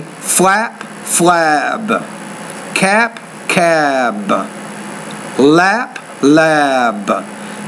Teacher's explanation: When the P is at the end of the word, now remember, the P is a voiceless consonant, so the vowel sound before should be shorter. If the B is at the end of the word, that's a voice consonant, the vowel which precedes it should be longer. So then we'll say flap, flab, cap, cab, lap, lab.